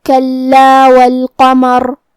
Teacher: کلمت کلا میں حرف اللام پہ تشدید ہے، لہذا دو حرف کے برابر ہم حرف اللام کو پڑھیں گے، کیونکہ تشدید کی اصلیت دو حرف ہے. · جیسا کہ یہاں حرف اللام ہے تو یہ دو لام ہے، لام ساکن اور لام متحرک. کلمت القمر میں قاف کی ادائیگی زبان کے جڑ اور تالوں کے نرم حصے سے ہے